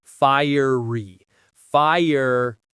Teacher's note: The stress is on that first part. Fire.